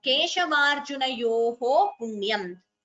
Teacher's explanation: So visarga followed by pa, upadhmaniya.